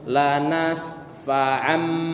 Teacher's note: Jadi nun mati bertemu dengan ba, seolah-olah nun mati berubah menjadi mim mati. Lanas fa'am, bukan fa'an lagi tapi ambi.